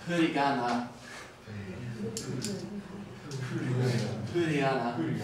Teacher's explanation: So for English and German, the F is with your lips on your teeth. And for Japanese, it's just between your lips. So, so you're basically just breathing out.